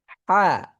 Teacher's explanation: পক্ষান্তরে হা, হা যখন আমরা উচ্চারণ করছি দেখেন, হা আওয়াজ পরবর্তীতে, বাতাস আগে।